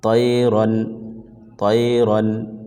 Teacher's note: نون کی آواز کو ظاہر کر کے پڑھیں گے، چھپا کر نہیں پڑھیں گے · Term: اظہار